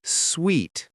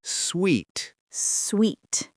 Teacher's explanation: The word sweet, the key sound is a long E, like in sea or tree. Your mouth is wide, almost like you're smiling. Sweet. The tongue is high and flat.